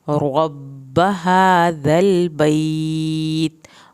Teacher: रॉ को पुर करें, बा की शत पे दबाव भी डालना है, बा की ज़बर को लंबा नहीं करना।